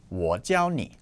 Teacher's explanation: When it's used as a verb, 我教你, I teach you, for example, it is in the first tone.